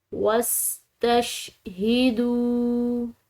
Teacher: یہاں پر واو ساکن یہ مضموم حرف کے بعد ہے، تو یہ واو ساکن واو مدہ ہے، کیونکہ جو واو ساکن ہو اور اس کے پیچھے والا حرف جو ہے وہ پیش کے ساتھ ہو تو وہ واو ساکن واو مدہ کہلاتی ہے، اور واو مدہ کو 1 الف کے برابر کھنچاؤ سے ادا کیا جاتا ہے